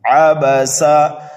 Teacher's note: جیسے یہاں پر تینوں حرف جو ہے متحرک ہیں۔ عبسا، سین کو سیٹی کی آواز دے کر کے پڑھیں گے